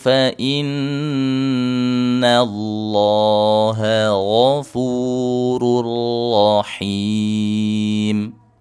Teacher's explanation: nun tasydid ditahan yang lama. Lafaz Allah yang ditebalkan.